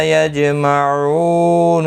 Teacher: او واو مدہ ہے، اور وقف کی صورت میں نون ساکن پڑھا جائے گا. وقف بالاسکان ہوگا، مد العارض وقفی ہوگا. 3 سے 5 الف کی مقدار کے برابر کھینچ کر وقف کریں گے.